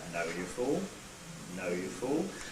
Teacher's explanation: Low rise, the third one on that page, starts low, as I described, and rises steadily towards the end of the intonation pattern. Exactly how high it gets will depend on how much of the intonation pattern there is left for you to put it on, really.